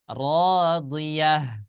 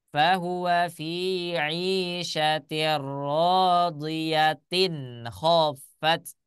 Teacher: Huruf ta marbutoh dibaca ta apabila dalam keadaan wasol atau meneruskan bacaan. Sedangkan ketika wakof menghentikan bacaan tidak dibaca ta melainkan dibaca ha sukun.